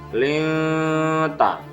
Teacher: Berikutnya hukum bacaan ikhfa ditemukan pada lafadz linta, nun sukun bertemu ta, dibaca samar